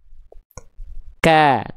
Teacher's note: ketika vokal A-nya keluar pangkal lidahnya turun.